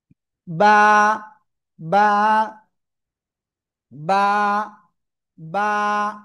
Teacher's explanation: দুই ঠোঁটের ভিজা অংশ থেকে এক আলিফটা নিয়ে উচ্চারণ করতে হবে। বা, বা, বা, বা, এক আলিফ টান।